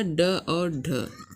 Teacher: मूर्धन्य व्यंजन अर्थात तालु और जीभ की सहायता से निकलने वाले व्यंजन